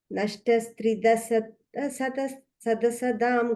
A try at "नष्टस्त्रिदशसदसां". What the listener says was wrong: You got extra da, you are adding somewhere there. Nashtas Tridasha Sadasam. Yeah, Tridasha is one word. Sadasam is another word. Tridasha Sadasam.